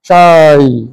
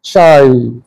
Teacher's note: आवाज मुड़ रही है, लंबी सीधी नहीं जा रही, लंबी तो हो रही है लेकिन जरा मोड़ काट के शाई, यूं है ऊपर गई फिर नीचे वापस आए शाई, तो इस तरह आवाज। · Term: लीन